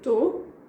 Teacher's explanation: again, I'm skipping the beginning of the word, of the verb. So I say tô, I am, we just say I am.